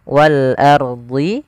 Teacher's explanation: Yaitu alif lam yang tertulis tapi dia dibaca huruf lamnya dengan jelas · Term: alif lam qamariyah